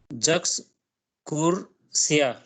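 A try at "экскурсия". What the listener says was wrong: साशा अशोक कगदा उनास एक्सकुर्सिया। ज नहीं है वो, एक्सकुर्सिया ए है, ए।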